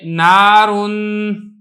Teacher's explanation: اب یہ دیکھیں نون چونکہ حروف مستعفلہ میں سے ہے لہذا نون کو تو باریک کرنا ہی کرنا ہے، نون کی وجہ سے جو الف ہے یہ بھی باریک کر کے پڑھا جائے گا